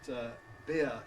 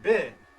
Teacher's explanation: And of course Australians have monophthongized. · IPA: bɪː